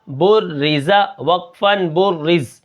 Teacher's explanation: با کے اوپر پیش ہے تو یہ جو تشدید ہے یہ پیچھے والے حرف کے ساتھ مل کر پڑھی جاتی ہے، جیسے با را پیش بر، اور دوسری بار یہ اپنی حرکت کے موافق پڑھی جاتی ہے، را زیر ری، بری، زا زبر زا، بُرِّزَ، وقفاً بُرِّز۔ زا کے اندر سیٹی ہے تو ہم سیٹی کو برقرار رکھیں گے